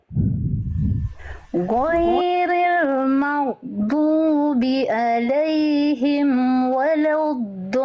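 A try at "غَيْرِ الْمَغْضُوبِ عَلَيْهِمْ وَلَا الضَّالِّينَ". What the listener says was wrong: Oke, huruf goin jangan go. Jangan samakan goiril g dengan ro. Walaupun lain ada diwakilkan dengan huruf G pada abjad alfabet, tapi lain bukan go, tapi ro. Lain dilafalkan dari tenggorokan paling atas, dialirkan suaranya dengan ringan. Ro.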